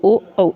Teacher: कंठ ओष्ठ्य की अगर बात करते हैं तो ओ औ इसके अंतर्गत आ जाता है।